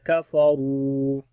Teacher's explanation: کاف کو بھی باریک پڑھیں گے، را کو موٹا پڑھیں گے